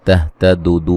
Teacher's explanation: दू व मद्दा है, वक्फन बड़ी मद के साथ पढ़ सकते हैं।